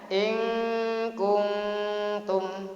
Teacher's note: non mati berjumpa dengan kaf dibaca ikhfa